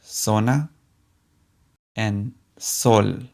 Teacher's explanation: both the z and the s in spanish sound just like the english s